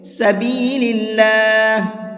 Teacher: اللہ کے لام کو باریک کر کے پڑھیں گے